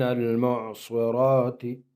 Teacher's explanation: معصرات صاد کو بھی پر پڑھیں گے اور را کو بھی پر پڑھیں گے، را پر کڑا زبر ہے، ایک الف کی مقدار اس کو کھینچیں گے۔